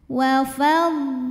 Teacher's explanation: Lam pada lafaz Allah dibaca secara tafkhim karena huruf sebelumnya lam berbaris fathah. Maka cara bacanya adalah ditebalkan, pangkal lidah angkat.